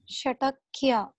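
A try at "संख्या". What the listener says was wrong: It is not Shatakya, the dot is the right of the letter. What letter is that?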